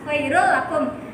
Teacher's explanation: Ini bacanya bukan khairul lakum ya, tapi khairul lakum. Tanwinnya dimasukkan ke huruf lam. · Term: idgham bilahuna